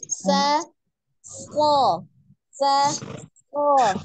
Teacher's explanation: Sinnya huruf tipis maka dia istifal, huruf sodnya tebal ya, isti'la dengan mengangkat pangkal lidah. Dibedakan tipis dan tebalnya.